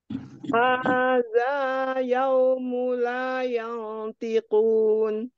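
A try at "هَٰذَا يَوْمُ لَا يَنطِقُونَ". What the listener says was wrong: Yau, sempurnakan dulu waw sukunnya tidak yau. Yau. Hada yaum la yantiqun.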